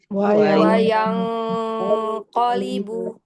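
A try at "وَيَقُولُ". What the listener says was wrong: dia langsung tebal. Gunnahnya langsung tebal. Nggak perlu ada bunyi uangan gitu. Wayang, masih ada baca masih ada yang baca ikhfa hakiki qaf itu bunyinya wayang, yang begitu, nggak usah. Ya, itu takalluf. Wayang qalibu, yang langsung tapi mulutnya dibuka, jangan sampai ditutup.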